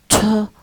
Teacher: We exert more effort and we say them with audible puff of air. So we pronounce them with a ha like that. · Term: aspiration